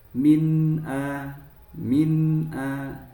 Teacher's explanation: nun sukun bertemu hamzah dan terbaca dengan jelas nun sukunnya dinamakan izhar halqi.